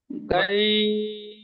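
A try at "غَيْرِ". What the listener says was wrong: গাই হবে না, গয়। র ইয়া যে রি, একাধিক পরিমাণ টান দিয়ে পড়তে হবে।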